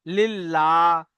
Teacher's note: আল্লাহ শব্দের লামের পূর্বে যদি জের হয় তো এটি হবে বারিক অর্থাৎ লা পড়া হবে